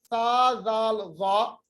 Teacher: जबान की नोक को हम ऊपर वाले जो 2 दांत है तना या उलिया उनके साथ मिलाते हैं